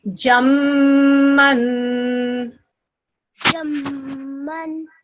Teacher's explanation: You did the ghunna just right. For about 2 seconds